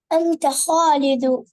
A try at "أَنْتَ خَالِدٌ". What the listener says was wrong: আনতা খালিদুনা, আনতা খালিদুন। ছেলেদের নাম, হ্যাঁ, ছেলেদের নামের মধ্যে 2 পেশ হবে। আনতা খালিদুন।